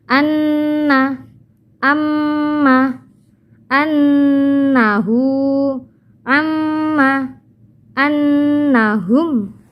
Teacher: Ini juga nun tasydid dan mim tasydid, ini namanya bacaan gunnah, maka ini harus dibaca agak lama